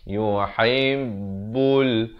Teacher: Ha pedas di pertengahan kerongkong.